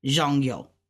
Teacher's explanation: So it's ja, hun, zhong yo. Now this is two fourth tones together, zhong yo. So we're gonna say it fast, zhong yo, because that's like a how, but you wouldn't pronounce it how like ni hao, because how is third tone.